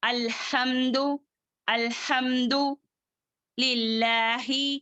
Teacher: یہ ہا اقصل حلق والا ہا ہے